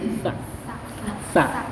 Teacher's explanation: karena ini nun mati bertemu sa itu lidahnya digigit